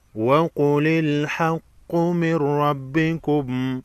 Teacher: نون ساکن کے بعد حروف یرملون میں سے را ہے، ادغام ہوگا بلا غنہ، غنہ نہیں ہوگا، صرف ادغام ہوگا